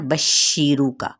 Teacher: शीन पे तफशी लेटर है तो हमने इसको क्या करना है, शीन पे आवाज़ को वाज़े करना है